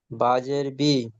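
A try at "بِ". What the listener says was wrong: বা টান দিতে হবে।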